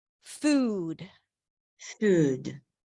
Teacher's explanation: The American ooh is all the way in the back. The tongue is not moving forward. It's pulling back. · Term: tense ooh